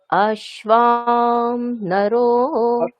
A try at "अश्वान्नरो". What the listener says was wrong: অশ্বা অন্তস্থ এটা, হ্যাঁ, ব নয়, অশ্যান্নরো এরকম।